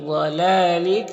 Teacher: ضاد حروف مستعلیہ میں سے پر پڑھیں گے، اور یہ لام میں کھڑا زبر ہے، ایک الف کے برابر کھینچیں گے، اور اس لام میں زیر ہے۔